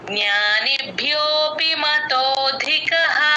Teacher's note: భి కి కూడా మహాప్రాణం ఉంది గమనించండి